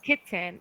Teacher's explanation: where like if we say kitten, we don't say T at all. We just like hold it in our throat. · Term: glottal T